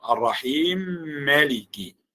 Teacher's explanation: وبالنسبة للإدغام الكبير عندي أسوسي يقرأ الرحيم مالكي، يعني الرحمن الرحيم مالكي. إذا وصل الآية الأولى بالثانية هذه فيقرأ بالإدغام